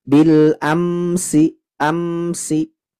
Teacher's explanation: hukumnya izhar syafawi tidak ada dengung yang lama di huruf mimnya jadi dengungnya itu sekadar menunaikan sifat tawasutnya saja jadi ditekan saja